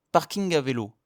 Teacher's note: la langue ne touche pas le palais comme pour un N. C'est un son nasal qui vient du fond de la gorge.